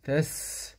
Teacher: سين سكون مع الهمس